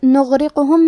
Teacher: کلمت نغرقہم میں غین ہے اور غین کی ادائیگی حلق کے اوپر والے حصے سے ہے. غین حروف تفخیم میں سے ہے تو ہم یہ حرف کو موٹی آواز میں پڑھیں گے. کیونکہ یہاں غین ساکن ہے تو ہمیں غین کو ظاہر کرنا ہے.